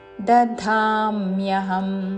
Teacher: ముందు అల్ప ప్రాణ ద తర్వాత మహాప్రాణ ధా